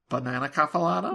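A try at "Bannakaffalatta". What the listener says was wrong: Not banana.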